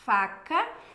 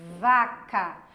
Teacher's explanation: Tá, mas ele ouve todos os sons, porque para eu falar faca, eu faço o mesmo movimento de vaca, mas faca, esse f é um fonema mais simples. E vaca vibra, mas o movimento é igual.